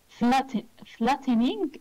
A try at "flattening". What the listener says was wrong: Yes. To flatten something.